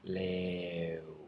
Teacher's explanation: you're tightening your mouth into a circle at the end